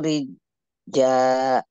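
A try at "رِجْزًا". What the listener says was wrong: Rijza. Rijza. Nah, itu satunya huruf J, satunya huruf Z. Rijza. Za. Huruf Z.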